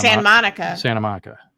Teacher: we're actually losing the T all together